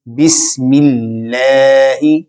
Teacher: اگر اس میں اللہ سے پہلے حرف کے نیچے زیر ہو تو حرف لام کو باریک پڑھا جاتا ہے ، جیسے بسم اللہ۔ کسی بھی حرف کو موٹا کرنے کے